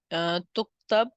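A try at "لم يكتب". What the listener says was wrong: یہاں پر لم تکتب نہیں ہے، یہ یہاں پر آپ نے پچھلے والے میں بھی نا لم تکتب نہ پڑھ لیا تھا، لم یکتب نہ، یہ تا چلتے چلتے پھر ایک اچانک جو ہے نا پھر یا آ جاتی ہے مؤنث میں۔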